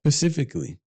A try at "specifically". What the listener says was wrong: no you're saying Pacific like Pacific Ocean